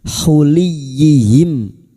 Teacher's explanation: huruf lam yang berharakat kasrah bertemu ya tasdid masuk ke huruf ya tanpa ditahan lama-lama tanpa mendengung